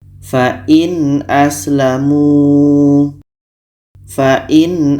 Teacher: Karena a adalah huruf izhar halki, maka di sini kita harus baca jelas. Yang jelas itu adalah nun jelas, a jelas, dan tidak ada dengung.